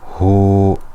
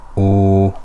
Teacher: if dhamma is followed by wow, it's stretched also for 2 harakas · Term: mad